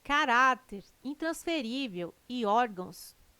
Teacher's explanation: têm sua sílaba tônica na penúltima sílaba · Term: paroxítonas